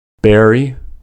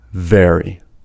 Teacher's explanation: B is a bilabial voiced stop, and v is a labiodental voiced fricative. Since b is a stop sound, there is a sudden release of air, and the extension of the sound is impossible.